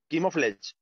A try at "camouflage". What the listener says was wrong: No, it's not chemo. It's camouflage.